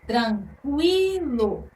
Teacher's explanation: aí na sílaba cui a letra q que é a consoante temos a semivogal u e a vogal I que é o fonema mais forte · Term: ditongo